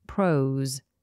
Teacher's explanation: Notice the S is voiced, so we have a Z sound.